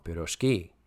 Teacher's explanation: The stress in pirozhki is properly placed on the last syllable.